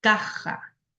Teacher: se fue la lengua hacia atrás y forma la J